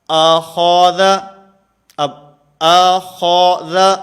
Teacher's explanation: حمزہ بھی باریک ہے، ذال بھی باریک ہے، اور درمیان میں خا یہ موٹا ہے ، تو ان دونوں کو باریک پڑھنا ہے اور درمیان والے